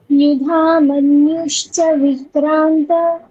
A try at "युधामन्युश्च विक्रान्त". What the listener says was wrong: বিক্রান্ত, ওখানে বিক্রান্ত ককারটা স্পষ্ট আসবে, মানে খাওয়া খাওয়া ককার এরকম একটা ভাব চলে আসছে। হ্যাঁ, স্পষ্ট, ককারটা স্পষ্ট। युधामन्युश्च विक्रान्त, विक्रान्त, क्रांत মানে ক্রান্তিকারী একটা ভাব।